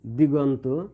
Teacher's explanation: দিক যোগ অন্ত সমান দিগন্ত। এখানে ক আর অ এই দুটি ধ্বনি মিলে ধ্বনি একত্রিত হয়ে গ হয়েছে